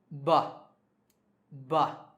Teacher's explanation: put them on your throat like so now say but but when you say but you should be feeling a slight vibration in your fingers coming from your throat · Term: voiced sound